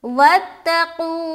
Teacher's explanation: ये जो हर्फ क़ाफ है इसमें मोटेपन की सिफत पाई जाती है और ये हरूफ मुस्तालिया में से आता है।